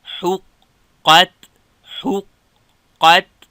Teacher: ح نرمه قاف ډک تا نرمه